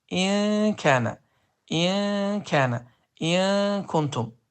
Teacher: burada dil yuxarı damağa dəymir, yaxınlaşır və 2 hərəkə miqdarında uzadılır. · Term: ixfə